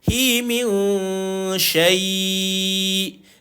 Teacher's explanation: Dengung. Tapi dengung samar. Menyamar-nyamarkan bunyi dengung tu tuan-puan. Bila tuan-tuan jumpa dengan shin, salah satu daripada 15 huruf yang kita sebut sebagai bacaan ikhfa hakiki.